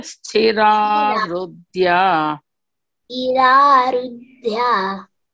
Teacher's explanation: The TH is Mahaprana.